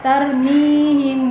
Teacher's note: dengan suara yang samar antara mim dan bak pada bibir kemudian ditahan kira-kira 2 harokat